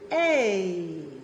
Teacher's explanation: When we take those two vowels, eh and e, and we put them together in a diphthong, we get a.